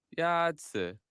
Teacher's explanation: The first tone is a high, level tone.